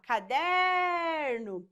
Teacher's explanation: Perceba que a sílaba que se estende é a sílaba der. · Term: sílaba tônica